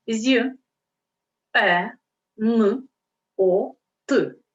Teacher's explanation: слово є нот а букв лише 4 Чому так Тому що буква є стоїть на початку слова тому вона позначає два звуки й е